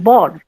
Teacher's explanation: ধরো এই যে আমি যদি বলছি বর, ব ব বয়সীর্ণ র, বর, এই বর কথাটা যখন বলছি তখন জিভটা গিয়ে দাঁতের পেছনে লাগছে